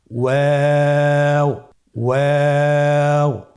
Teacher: ওয়াও হরফটি উচ্চারণের ক্ষেত্রে বারিক হবে এবং 3 আলিফ টেনে পড়তে হবে।